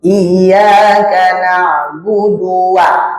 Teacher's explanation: Huruf wau merupakan huruf syafatain, yaitu huruf yang keluar dari dua bibir. Maka harus berhati-hati dalam mengucapkan wau.